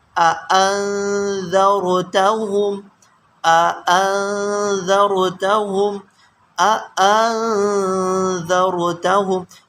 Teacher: یہ دونوں حمزہ کو تحقیق کے ساتھ پڑھتے ہیں۔